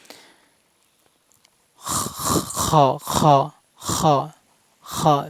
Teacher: খর মাখরাজ অলকের শেষ অংশ থেকে উচ্চারণ হবে মানে গলার শেষ অংশ থেকে উচ্চারণ হবে